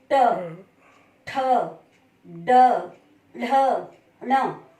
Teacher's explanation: इन 5 वर्णों को जब हम बोलते हैं तो जो हमारी जीवा है वो ऊपर वाले तालुए को पूर्ण रूप से स्पर्श करती है। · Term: ट वर्ग